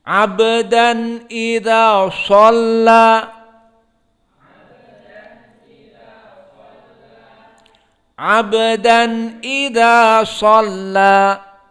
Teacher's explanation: Maka silahkan kita membaca dan intibah kepada so yang mufakhamah, dirasakan bedanya dibaca semuanya dalam keadaan flat kecuali so di sini mufakhamah